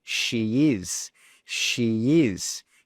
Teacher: We add a y sound between she and is